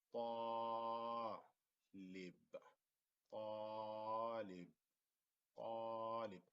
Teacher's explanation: we kind of stretch the alif طا because the alif is a long vowel, so we stretch it a little bit